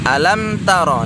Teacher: mim sukun berjumpa dengan huruf ta. Ini nggak boleh didengungkan ya. Hukumnya izhar syafawi.